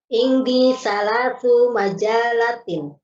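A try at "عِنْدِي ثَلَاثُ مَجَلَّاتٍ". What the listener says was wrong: Setelahnya panjang. Kalau di kita lamnya nggak bertasydid ya, majalah.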